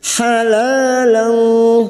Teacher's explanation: Halalan, fathah tanwin pada huruf lam alif, fathah tanwin bertemu fo, namanya bacaan ikhfa hakiki. Kita samarkan bunyi fathah tanwin dan mendengung selama 3 harakat.